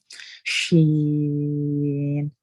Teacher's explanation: یہ جو زبان کا درمیان والا حصہ ہوتا ہے نا, جو جب شین ادا کرتے ہیں تو زبان کا درمیان والا حصہ ہو, پھر اس کے اوپر ہی یعنی سامنے سخت تالو جو ہارڈ پیلٹ ہوتا ہے نا, وہاں سے جا کے ہماری درمیان والا حصہ زبان کا وہاں پہ جا کے لگتا ہے شین میں